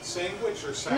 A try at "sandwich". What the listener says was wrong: No, there's no G. Sandwich.